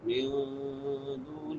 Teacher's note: نون ساکن پہ اخفا ہوگا کیونکہ بعد میں حروف اخفا میں سے دال ہے